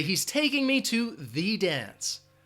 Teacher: we're emphasizing the or you could say thee